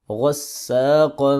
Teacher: غین اور قاف حروف مستعلیہ میں سے ہے، اور غین حروف حلقی میں سے بھی ہے، موٹا بھی کریں گے. اور سین کو حروف سفیریہ میں سے ہے، اس کو باریک کر کے پڑھیں گے، اس کو سیٹی کی آواز سے پڑھیں گے. قاف کے اوپر ہم اخفا کریں گے.